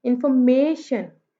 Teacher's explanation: मे पे हमने स्ट्रेस किया है